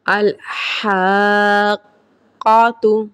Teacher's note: مدہ لازم کو ہم 3 الف کی مقدار کے برابر کھینچ کے پڑھیں گے